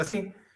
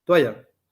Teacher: Sin embargo, acá en San Juan yo le digo toalla, casi como una U, toalla, y la Y, o ese fonema fricativo sonoro, lo hago como si fuera una vocal